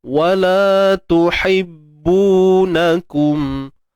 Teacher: Bu dua harakat mat asli